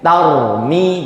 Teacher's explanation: antara ro sukun ketemu mim, ro-nya berarti idhar.